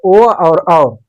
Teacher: ओ और औ, इसका जो उच्चारण स्थान है कंठ ओष्ठ है, इसलिए कंठोष्ठ कहा गया